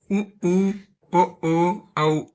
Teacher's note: அப்படின்னு சொல்லக்குள்ள உதடுகளை வந்து குவிச்சு ஒலிக்கிறோம்.